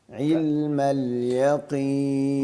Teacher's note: مسئلہ یہ ہے کہ جب یہ زیر کے ساتھ آیا ہے نا, عین تو ویسے بھی باریک حرف ہے تو اس کو موٹا نہیں کرنا. علم, ہم عین کو نکالنے کے چکر میں اس کو زیادہ زور سے ادائیگی کرنے کے لیے اس کو تھوڑا موٹا کر دیتے ہیں, تو یہ موٹا نہیں ہے.